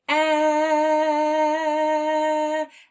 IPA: ĕ